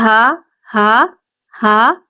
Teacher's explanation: یہ جو ہا ہے اس میں ہوا جو ہے حلق کے درمیان سے باہر آئے گی